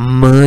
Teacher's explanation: उनमें ये होता है कि जो एयर होती है वो जो है वो माउथ से पास नहीं होती, बल्कि नेजल कैविटी से नोज से पास होती है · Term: नेजल साउंड